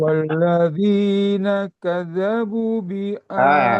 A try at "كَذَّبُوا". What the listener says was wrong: Walladzina kazzabu. Ini ada tasdid. Jadi jangan kazzabu kecepatan. Ditekan di tasdidnya.